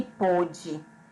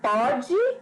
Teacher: Porque o pôde, ele é pronunciado com o som fechado, certo? E pode é pronunciado com o som aberto